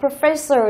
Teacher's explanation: professor là trọng âm ở âm thứ hai